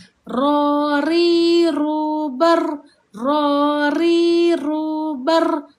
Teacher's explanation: huruf ra ini dia ada satu sifat iaitu getaran takrir